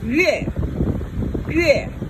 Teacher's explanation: That's fourth tone, falling tone.